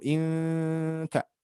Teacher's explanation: Jadi tahan menahan huruf itu ada tempat-tempatnya, salah satunya nun mati bertemu kaf, ikhfa harus kita tahan